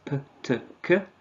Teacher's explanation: We have the plosives p, t, k. However, all of these are unvoiced and unaspirated.